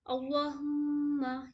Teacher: اللہ کے نام کو منہ بھر کے پڑھیں گے، ٹھیک ہے؟ اور میم میں غنہ کریں گے، میم میں مشدہ ہے، غنہ کریں گے۔